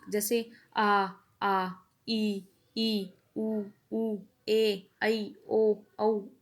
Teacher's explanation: स्वरों के उच्चारण में हवा केवल मुंह से निकलती है